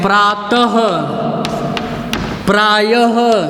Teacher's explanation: ये विसर्ग जो है ह के रूप में स्वर रहित ह के रूप में उच्चरित होता है